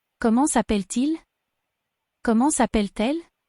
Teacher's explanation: And the T is pulled to il or elle.